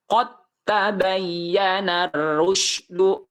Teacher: sekalipun ini qqalah karena keadaannya dia harus diidamkan ke huruf ta jadi dalnya dihilangkan tapi dimasukkan ke huruf ta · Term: idgham mutajanisen